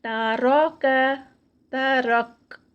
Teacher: تا لائٹ، را ہیوی درمیان میں، اور کاف پھر لائٹ